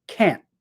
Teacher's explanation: I think the tone of the word falls a little bit